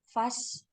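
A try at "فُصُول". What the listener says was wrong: Nah, itu jamak dari faslun. Fa-nya itu domah.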